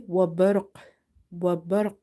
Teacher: qalqalah will be strong because your word is ending with the qalqalah letter and letter itself is silent because we have to pause here. · Ra is heavy because before Ra Sakina you have Fatha. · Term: strong qalqala